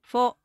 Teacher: Unlike the English F, which involves the upper teeth touching the lower lip, f is a soft puff of air between both lips. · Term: F sound